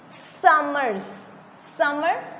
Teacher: beginning च जोर पै रहा है, एंडिंग जोर नहीं पै रहा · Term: stressed